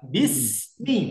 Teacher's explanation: ketika sin sukun, jangan sampai ada se-nya.